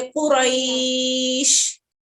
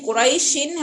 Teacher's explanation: جب حروف لین کے اوپر رکیں گے, ہم وقف کریں گے, تو وقف کرنے کی وجہ سے جو سکون آئے گا اس کو ہم مد لین عارض کہیں گے